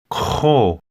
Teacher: This means two. It's a guttural K sound.